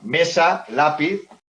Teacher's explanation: son palabras Llanas porque el golpe de voz cae en la penúltima